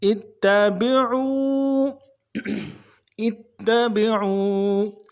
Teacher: عو میں واو مدہ ہے، ایک الف دار میں کھینچیں گے